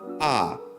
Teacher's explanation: second sound because it's a downward tone for example ah [Music] there is only a downward pitch to the combination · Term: fourth tone